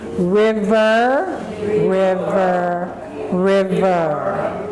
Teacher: There's two R sounds, ri and So our tongue never touches the roof of our teeth. Our tongue does not touch the roof.